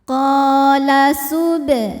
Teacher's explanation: Ada hukum qalqalah sughra sebab ada huruf qalqalah yaitu huruf ba yang sukunnya ini sukun asli bawaan dari kalimah subhanaka ya, dan ada di tengah bacaan. Maka cara bacanya ba dipantulkan dengan pantulan yang kecil. Qala hukumnya adalah mad tabi'i muqaddar sebab huruf H berharokat fathah panjang, maka cara bacanya H dipanjangkan 2 harokat.